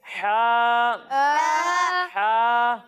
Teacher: जब हम हा की अदायगी करेंगे तो इसे हलक के दरमियाने हिस्से से पढ़ेंगे